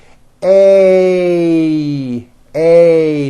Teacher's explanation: this sound is a combination of two vowel sounds. You start with an A, and then you glide up to an E. A, A. Notice how my mouth also closes a little bit at the end of the vowel.